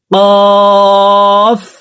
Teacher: কফ হরফকে জিহ্বার গোড়া তার বরাবর উপরে তালের সঙ্গে লাগাইয়া উচ্চারণ করে পড়ব।